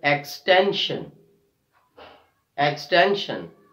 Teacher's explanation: So we are stressing on the second last syllable, T-E-N, extension, extension.